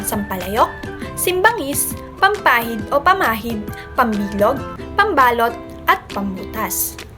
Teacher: Laging tandaan na napapalitan ng ponemang M ang ponemang NG kapag ang nilalapian ay nagsisimula sa P at B.